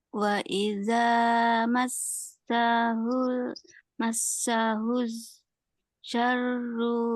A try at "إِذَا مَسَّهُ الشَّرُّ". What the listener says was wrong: Massahus syarru. Jadi yang pertama sin, kemudian yang kedua shin yang dari tengah lidah. Wa iza massahus syarru.